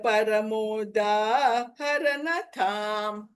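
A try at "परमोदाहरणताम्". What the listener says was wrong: Tam is a alpa prana. Don't say tam. No, it is tam, but not tham. I heard it as tham. It is ta.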